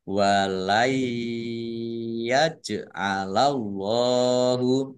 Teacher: Nun sukun bertemu dengan huruf ya. Bacaan idgham bi gunnah masuk dengan mendengung yaitu mendengung ya ditandai yaknya dibaca ditandai dengan ada tasdid. · Allahnya dibaca tebal karena harokat di depannya fathah. Lam fathah berdiri, mat tabi'i, panjang 2 harokat.